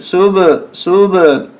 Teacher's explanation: سین با پیش صب، قلقلہ ہوگا صب، آواز ٹکرا کر آئے گی 2 دفعہ، یعنی با گویا کہ 2 دفعہ با کی آواز آ رہی ہے.